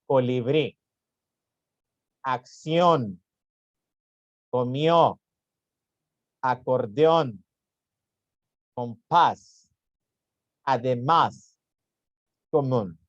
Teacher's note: Son las palabras cuya sílaba tónica, la que se pronuncia más fuerte, va en la última sílaba. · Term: palabras agudas